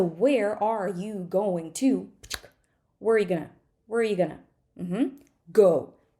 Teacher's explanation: it is going to be smaller softer it's going to take up less time and probably the vowels are going to end up being schwas right because we don't have that much time for them so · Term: reduced